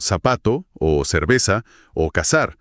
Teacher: Ponen la lengua entre los dientes y soplan.